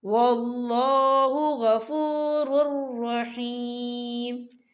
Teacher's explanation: تو یہاں پر ادغام ہوگا اور ہم اسے بنا غننے کے پڑھیں گے